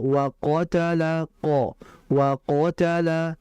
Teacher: Maka kondisi tebal qof itu ketika fathah jelas sekali.